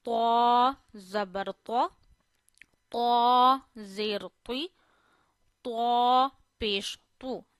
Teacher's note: But we read ta always in a thick voice.